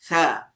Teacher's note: آپ کی زبان کی نوک اوپر والے سامنے والے دو دانتوں کے ساتھ جو ہے وہ ٹچ ہونی چاہیے